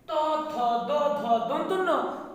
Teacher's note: দন্ত ন বলছি দন্ত থেকে উচ্চারিত হয়, এই জন্য এই ধ্বনিগুলোর নাম হচ্ছে দন্ত ধ্বনি